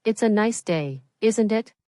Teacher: The tone going up at the end tells the listener that you're asking a question.